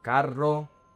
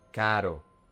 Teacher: You don't say carro because if you roll your tongue, it's gonna mean car.